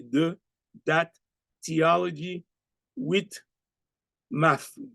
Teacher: Haitian students will often use a D sound, a T sound, or an F sound in place of the TH sound